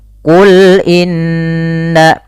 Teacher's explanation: Inna nah pada lafal Inna ini sama dengan tadi Walan nasor ada bacaan gunah yaitu huruf nunnya ditahan dua harakat · sesuaikan dengan makhraj lam itu tipis · ada bacaan gunnah, yaitu huruf nunnya ditahan 2 harakat sebagaimana kata Imam Jamzuri, wa gunna miman thumma nunan syuddida, dan gunnahkanlah dan bacalah dengan gunnah ketika mim dan nun berharakat tasydid.